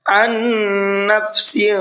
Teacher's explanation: نفس عن، اس طریقے سے ان، یہاں پر دیکھیے نون ساکن ہے، اور نون ساکن کے بعد میں پھر ایک اور نون آ رہا ہے۔ نون ساکن کے بعد میں نون آتا ہے تو وہاں پر غنہ کر کے پڑھتے ہیں